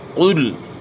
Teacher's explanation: قاف کو آپ نے موٹا پڑھنا ہے، پیش کو معروف پڑھنا ہے، یعنی پیش کی ادائیگی میں ہون گول ہوتے ہیں